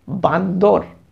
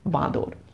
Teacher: অর্থাৎ এখানে অসাবধানতার দরুন মাঝখানে বান্দর শব্দে যে দন্তন ধ্বনিটি ছিল সেই নাসিক্য ধ্বনি লোপ পেয়ে অনুনাসিক করে গেছে পূর্ববর্তী স্বর বয় আকারকে, তাই আমরা উচ্চারণ করছি বাঁদর।